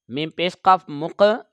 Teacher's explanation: یہ قاف حروف قلقلہ ہے، اس کو ہم آواز لوٹا کر پڑھیں گے۔